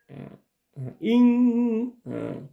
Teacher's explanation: Bila mana ada nun sukun, tanwin dan kasratain atau dhammatain bertemu dengan huruf 15 ikhfa, salah satunya adalah ada kaf, ada ta kembali ini, maka dia adalah ikhfa hakiki. Jadi cara membacanya dengan berdengung atau bersama-sama dan berdengung seperti kita bunyi n atau ng ya.